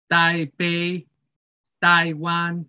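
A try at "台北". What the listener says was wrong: Yeah, same. Yes, yes. Yeah, okay. You got it.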